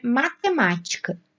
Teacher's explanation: Em matemática, a sílaba tônica é o ma. E o ma, em matemática, está na antepenúltima sílaba.